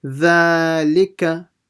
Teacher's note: make sure you don't stretch the li or the ka.